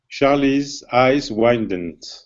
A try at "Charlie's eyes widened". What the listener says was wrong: Okay, now what you're doing, you're adding an N right in here. You're saying widened. Instead of widened, it's widened. Widened.